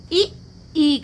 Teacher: तालव्य से इ ई का उच्चारण हो रहा है